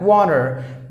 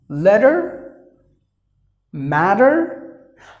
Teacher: if you find the letter T in between the vowels, the T is pronounced like the D by the Americans. It doesn't happen in the beginning, it happens either in the middle or towards the end.